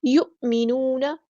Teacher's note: حمزہ ساکن ہے تو جھٹکی کی آواز آئے گی